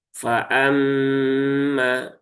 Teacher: Jadi ditahan dulu tiga harakat ya. Setiap yang ghunah itu ditahan tiga harakat. Jangan terburu-buru. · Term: ghunah musyaddadah